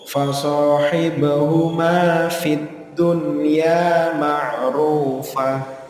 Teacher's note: Ada nun sukun bertemu dengan ya, tetapi kita membacanya jelas. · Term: idhar mutlak